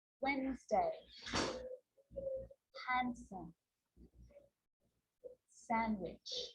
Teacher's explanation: I'm not pronouncing the D in sandwich. I'm just pronouncing the consonant N